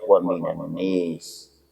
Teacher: Pada ayat 207 sekali lagi bertemu dengan wa minan nasi, khusus untuk Duri membaca dengan wa minan nis, baca secara imalah nun fathah wal alif